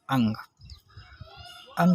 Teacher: अब अंग का उच्चारण होता है नाक के माध्यम से। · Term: नासिक